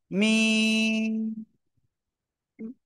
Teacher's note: দুই ঠোঁটের বাইরের অংশ থেকে · এই মিম অক্ষরটা আসলে দুই ঠোঁটের শুকনো জায়গা থেকে উচ্চারণ করতে হয়, আর 1 2 3 4 আলিফ টেনে পড়তে হয়।